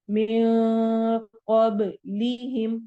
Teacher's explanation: من قبلہم میں نون کی آواز کو چھپائیں گے، قاف کو موٹا پڑھنا ہے